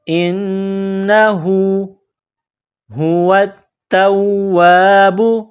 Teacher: گول ہا ہے، منہ سے ہوا نکالنے کی طرح اس کو پڑھتے ہیں۔ واو کو تا کے ساتھ پلس کرنا ہے، تا میں سختی کرنی ہے، تا کو واو کے ساتھ پلس کرنا ہے۔